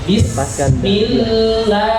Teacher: lam tipis karena sebelumnya terdapat kasrah